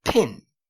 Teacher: in the word pin is aspirated because it's in the beginning of the word and it has a vowel right right after it you are